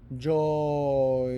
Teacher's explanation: there's really like several vowel sounds in that joy we say it really quick